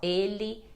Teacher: vai ter esse som de i quando o e tá em posição final de palavra